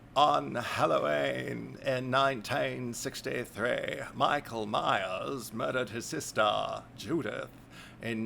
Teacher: oh I got a good vocal fry going